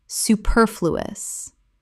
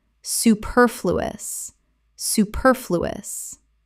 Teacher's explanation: Four syllables with the stress on the second.